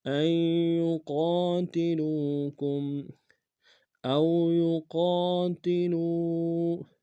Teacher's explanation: او میں واولین ہے بغیر کھینچ پڑیں گے، یقا میں قاف الف مدہ کے کنارے میں کھینچیں گے، لام کو واو کے سامنے آئیں گے، واو مدہ کے کنارے میں کھینچیں گے۔